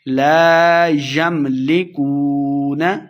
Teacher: اس کاف کو موٹا نہیں پڑھنا تو واو پہ اپنے ہونٹ گول کریں گے